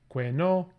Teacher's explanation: it would be que no, low high, rather than low rising, because the contour tone is stretching out over these two syllables.